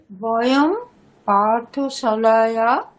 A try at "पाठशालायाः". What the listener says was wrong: পাঠশালায়াহ, madam বিসর্গ উচ্চারণ করতে হবে, নাহলে ভুল হয়ে যাবে। পাঠশালায়াহ।